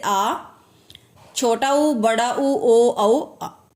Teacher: पश्च स्वर यानी जीभ का पश्च मतलब पीछे वाला, यानी जीभ का पिछले वाला भाग जो है काम करे तो वो कौन सा कहलाता है? पश्च स्वर कहलाता है